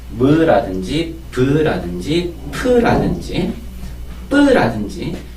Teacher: 입술을 모았다가 벌리면서 내는 소리죠. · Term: 입술 소리